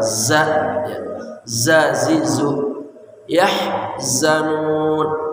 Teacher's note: zai ujung lidah bersama gigi seri bawah